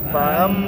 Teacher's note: Kalau ada me atau no yang disita. Gunnah. Wajibil gunnah. Wajib dengung. Wajib ditahan dulu.